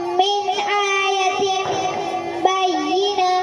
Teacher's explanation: نون ساکن کے بعد اظہار کے 6 حروف میں سے حمزہ آیا ہے تو نون ساکن کا اظہار ہوگا۔ اظہار یعنی کہ نون ساکن کی آواز کو ظاہر کر کے پڑھے